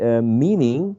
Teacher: has 2 syllables, and the first syllable is the most prominent one.